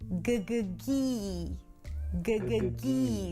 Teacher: So the tongue pulls back for the g and then forward for the high E.